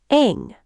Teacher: Let it ring in the back, through the nose. It buzzes in the back.